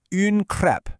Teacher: You ask for une crepe with a nice wide open e sound.